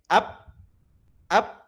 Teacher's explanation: Nah, karena tempat keluar hurufnya adalah merapatkan kedua bibir, maka ketika huruf tersebut disukunkan atau mati, maka ditekan pada bagian tempat keluar hurufnya. Nah, maka ketika dilafalkan ba sukun ini, dia tertutup bagian bibirnya, maka suaranya tertahan. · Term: syiddah